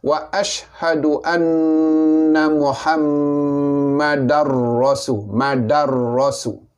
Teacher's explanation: Oleh kerana tanwin bertemu dengan ra, selepasnya adalah huruf ra, bunyi ra, maka datanglah hukum idgham, memasukkan bunyi tanwin ke dalam ra, idgham bila gunah dengan tiada dengung